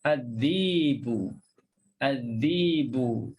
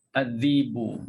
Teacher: dia baca dengan tukarkan hamzah tersebut jadi mad. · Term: ibdal